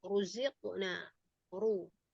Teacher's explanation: Ra yang mufakhamah adalah yang pertama ra yang di fathah atau di dhammah.